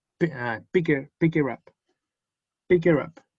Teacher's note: cuando está el objeto en medio, en este caso, picked her up, sube el up, no en volumen, sino en entonación.